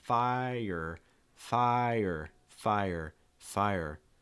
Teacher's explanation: under fire fire is also kind of a tricky word because when you pronounce it it almost is two syllables it's going to break into two parts